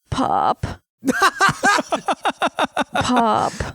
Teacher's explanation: she just has like a little vocal fry sometimes